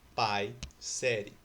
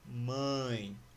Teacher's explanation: o ar saiu apenas pela boca, o que é diferente do ditongo nasal, quando o ar sai pela boca e pelas fossas nasais, ou seja, próximo ao nariz.